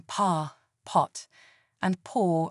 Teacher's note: Although for British speakers like me, the vowels in pa, pot, and paw are distinct and separate phonemes